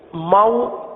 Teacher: واو ساکن سے پہلے زبر ہے اور آپ کو یاد ہوگا کہ حروف لین کو ہم نے نرمی کے ساتھ پڑھنا ہے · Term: واو لین